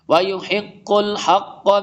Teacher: قاف موٹے رو میں سے اسٹرانگ بھی پڑھیں گے، مشدد ہے